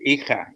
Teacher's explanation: And I was talking about the glottal stop. You know, the jota in Spanish, hija. You know, hijo, and that's coming from the back of the mouth